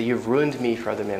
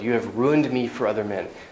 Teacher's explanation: i'm maybe putting emphasis on ruined